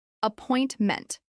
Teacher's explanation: This is pronounced with stress on the second syllable.